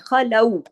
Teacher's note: لام باریک پڑھیں گے اور واو لین ہے